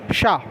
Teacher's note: ऊष्म ये संघर्षी बोलते हैं, इसमें गर्म हवा निकलती। देखिए शाह, ये क्या है, शाह, थोड़ा जीभ को रोल किया आपने, शाह और तालव्य में लगाया इसलिए तालव्य हो गया, तालु में लगाया इसलिए तालव्य हो गया।